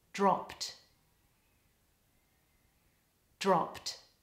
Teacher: In the word dropped, the past tense ending is a pt cluster. So a consonant cluster is when you've got two consonants in a row.